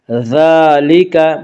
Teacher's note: ذال کے اوپر کھڑا زبر ہے، کھڑا زبر کو 1 الف کے برابر کھینچ کر پڑھیں گے